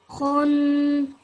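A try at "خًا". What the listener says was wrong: Khun would be if it had a dhammaten on top of it. This has a fathaten on it. So you would still pronounce it like, so you would have that nasal sound at the end, okay? Khan.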